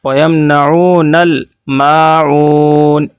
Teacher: وَيَمْنَعُونَ نون کو جلدی پڑھیں گے، نون کے اوپر زبر ہے، او کو کھینچیں گے اس لیے واو ساکن سے پہلے پیش ہے، اور پیش کو واو ساکن سے پہلے جب پیش ہوتا ہے تو واو مدہ ہوتا ہے، واو مدہ کو ایک الف کے برابر کھینچ کر پڑھتے ہیں. وَيَمْنَعُونَ ایسے نہیں پڑھیں گے وَيَمْنَعُونَ اس طرح نہیں، وَيَمْنَعُونَ الْمَاعُونَ میم الف زبر ما، الف سے پہلے زبر ہے اس لیے الف مدہ ہے.